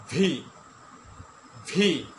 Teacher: উপরের দাঁতের নিচের অংশ এবং নিচের যে ঠোঁট রয়েছে এই নিচের ঠোঁটের পেট থেকে